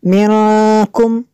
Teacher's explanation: نون ساکن کے بعد کاف حروف اخفا میں سے، یہاں پہ اخفا ہوگا اس لیے یہاں پہ غنہ کریں گے